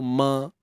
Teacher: Bila kita sebut mim ni memang melibatkan hidung kan. Kita sebut tu ma. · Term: dengung